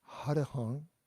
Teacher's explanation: it's got a nasal sound at the end again and the vowels are pretty short